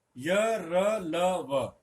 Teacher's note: य का तालु, तालव्य, र का मूर्धा, मूर्धन्य, ल का दंते, दांत, और व का ओष्ठ। तो ये इनके चारों के उच्चारण स्थान हैं। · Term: अंतस्थ